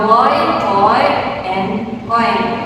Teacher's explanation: itu berasal dari vokal o ke i ya. Seperti contoh di kata boy, toy and coin ya. · diphthong oi itu berasal dari vokal o ke i